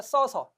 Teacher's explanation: 모음 탈락은 먼저 의 탈락입니다. 어간 끝소리 의가 뒤에 아나, 어로 시작하는 말이 오면 탈락하는 현상입니다.